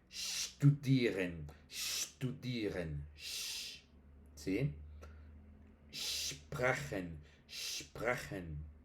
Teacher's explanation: Entonces es eso, ST y SP va primero con sh.